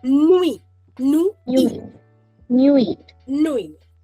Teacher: I am not pronouncing the T over here